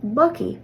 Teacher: the G sound was reduced to a hard C or a k sound